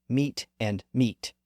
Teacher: These word pairs were once pronounced differently, but the vowels crashed together and merged